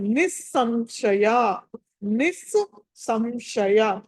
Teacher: రెండు స లు ఉన్నాయి కాబట్టి రెండు సా లు పలకాలి